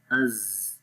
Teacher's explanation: As you can see, when we touch the tip of the tongue on the inner edges of Sanaya Sufla, so there is a little gap between both teeth, and the sound goes to the outside, and which makes this whistle sound. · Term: Safir sound